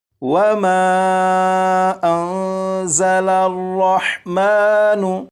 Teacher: اس نون ساکن میں اخفا کے قاعدے کے مطابق غنہ کر کے پڑھیں گے، اور یہ جو زا ہے اسے سختی سے پڑھیں گے، یعنی سیٹی کی آواز کے ساتھ۔